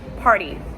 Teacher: the r and the t are like the r and d